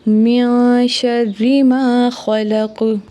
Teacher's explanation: مثال کے طور پہ من شر ما خلق، یہاں پہ نون کے بعد شین ہے تو یہاں پہ اخفاء ہوگا، یعنی آواز ناک میں چھپائیں گے، کیونکہ شین نہ تو حروف حلقی میں سے ہے، نہ حروف یرملون میں سے ہے، اور نہ ہی حرف اقلاب میں سے ہے۔